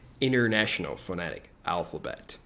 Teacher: Os americanos geralmente tendem a omitir o T após o N, tá? Então é comum eles dizerem International Phonetic Alphabet, ok?